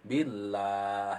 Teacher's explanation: Ketemu dengan billah dengan kalimah Allah dan di awalnya dengan kasroh, maka itu disebut dengan tarkik. · dibacanya juga harus panjang karena berhenti di akhir kata